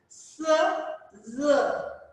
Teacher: the blade of the tongue comes very closer to the alveolar ridge and very narrow passage is there, and the air passes through that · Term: alveolar fricatives